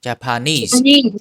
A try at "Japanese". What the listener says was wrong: Needs. One more S. Japanese. When you see SE at the end, you need to say saw sound. Japanese.